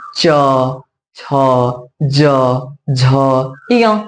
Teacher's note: च, छ, ज, झ, य, ये तालु को स्पर्श करते हैं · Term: च वर्ग